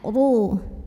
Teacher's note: Huruf ra dibaca secara tafkhim karena ro-nya berbaris di atas barisnya. Maka bacanya tebal, pangkal lidah dinaikkan.